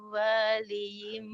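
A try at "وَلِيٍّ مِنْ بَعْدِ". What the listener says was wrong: Meu. Kurang nyambar. Meu waliyim min ba'di.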